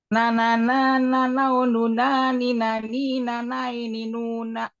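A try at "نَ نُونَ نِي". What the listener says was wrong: Masya Allah, lancar ya.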